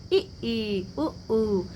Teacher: संवृत में जिसके उच्चारण में मुख लगभग बंद रहता है।